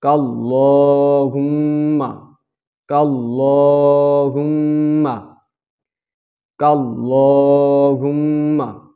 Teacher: লামে এক আলিফ পরিমাণ টেনে এবং মোটা করে পড়তে হবে এবং মিমে গুন্না আদায় করে পড়তে হবে